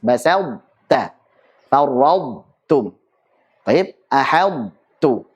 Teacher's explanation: kita ucapkan ta tebal terlebih dahulu tanpa qalqalah, basalta, baru kemudian ta tipis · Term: idbaqnya masih tersisa